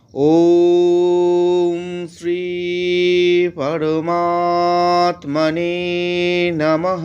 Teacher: শেষে বিসর্গ থাকলে সেটা হ এরকম উচ্চারণ হয়